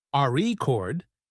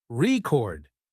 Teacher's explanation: if you stress the first syllable, RE chord, it's a noun, but if you stress the second syllable, record, it's a verb